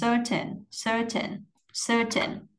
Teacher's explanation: mình có cái âm ơ nó dài ha các bạn, âm dài hơn một xíu, cong lưỡi, gồng lưỡi lên sir, lên giọng sir.